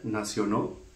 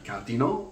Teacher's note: what happens in French is that the L has disappeared altogether after back vowels.